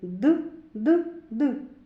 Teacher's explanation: коли ми вимовляємо звук д язичок підіймається до верхніх зубів